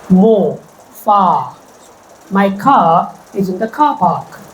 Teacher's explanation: My car is in the car park. So R is not spoken in standard British variety · r is not spoken in standard British variety unless it is followed by a vowel sound